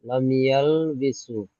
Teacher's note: মিমকে বিনা গুণায় জাহির করে তাড়াতাড়ি পড়তে হবে। জি ইয়ার উপরে যে জাবার আছে, জাবারটি হলো হারাকাত, হারাকাতকে তাড়াতাড়ি পড়তে হয়, টান দেওয়া নিষেধ।